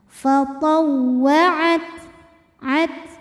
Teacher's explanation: Hams artinya keluar angin. Untuk ta yang sukun, maka anginnya keluarnya terakhir setelah keluar suaranya. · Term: sifat hams